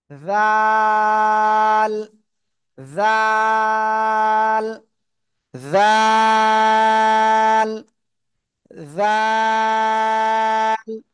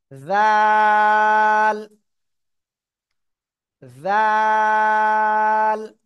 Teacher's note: জিহ্বার আগা সামনের উপরের দুই দাঁতের আগার সাথে সাথে লাগিয়ে নরম করে আমরা উচ্চারণ করবো